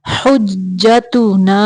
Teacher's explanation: ہا کو جیم کے اندر تھوڑی دیر ملائیں گے کیونکہ جیم مشدد ہے